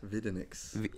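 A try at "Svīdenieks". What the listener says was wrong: Not with an X, Videnix.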